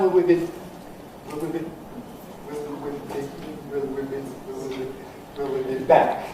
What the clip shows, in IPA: wɪl wi bi